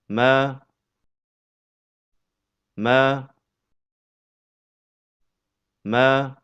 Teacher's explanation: Huruf mim keluar dari pertemuan antara bibir bawah dengan bibir atas.